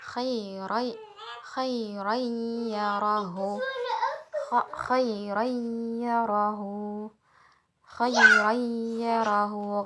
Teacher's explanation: Jangan lupa huruf ya-nya ada dengungnya.